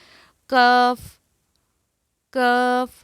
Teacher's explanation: خاف کے مخرج سے ذرا نیچے منہ کی جانب زبان کی جڑ کے قریب اور اس کے مقابل تالو سے ادا ہوتا ہے